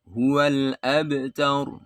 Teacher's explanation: Qalqalah sughra, pantulannya kecil. Ya, tidak terlalu kuat.